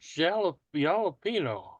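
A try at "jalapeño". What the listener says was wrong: the J The J in jalapeno is silent. It's an H, yeah. It's like, the Hispanic name Jesus is pronounced Jesus.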